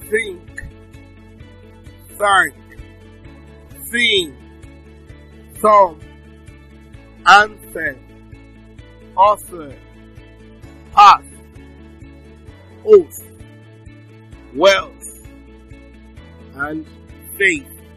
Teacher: It's a voiceless dental fricative consonant sound. Okay, and it's produced with the tip of the tongue touching the front teeth.